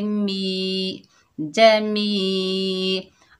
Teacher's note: जिम के ऊपर ज़बर है, बगैर खींचे पढ़ेंगे जा। मीम के नीचे ज़ेर है, आगे या साकिन है, ये या मद्दा है, एक अलिफ की मिकदार खींच कर पढ़ेंगे